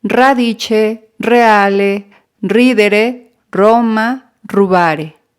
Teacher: Si la R se encuentra entre una vocal y una consonante, va a tener el sonido de R vibrante